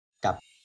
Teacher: es una sílaba muerta y se lee con tono bajo